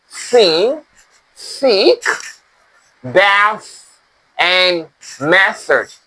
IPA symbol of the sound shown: θ